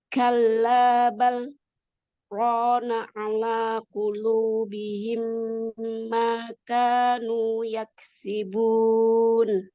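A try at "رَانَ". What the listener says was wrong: Tinggal roknya ditebalkan lagi. Iya, masih tipis roknya.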